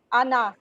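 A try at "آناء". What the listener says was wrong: آنا، یہ انا نہیں ہے، یہ آنا.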